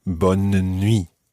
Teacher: bonne nuit, with almost a mini syllable in the middle there